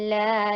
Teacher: الف ساکنہ قبلہ مفتوح. الف ساکن ہے اور اس سے پہلے والے حرف کے اوپر یعنی لام کے اوپر فتحہ ہے تو اس کو لانگ کریں گے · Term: مد طبیعی